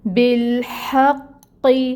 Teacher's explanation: پھر ہے ہا، ہا وسط حلق سے آئے گی آواز، وسط حلق سے نکالیں گے، ہا کی ہمس لے کے آنی ہے · قاف حروف مستعلیہ میں سے ہے، پر پڑھا جائے گا اور اس پہ جو ہے ٹائم ٹیکنگ ہوگا کیونکہ تشدید ہے، اور پھر اس کے نیچے جو یہ حرکت ہے یہ 1 کاؤنٹ ادا ہوگی۔